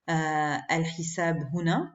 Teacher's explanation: Donc, je prononce elle. Je prononce la hamza de l'article.